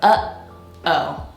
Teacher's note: when you say the word uh oh that stop you have in the middle you're stopping the air with your throat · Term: glottal stop